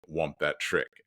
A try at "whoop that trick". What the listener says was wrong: it's "whoop that trick," not "womp." the shirt even says "whoop that trick."